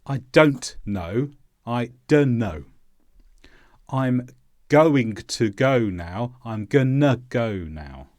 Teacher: often the sound of the consonant is replaced with uh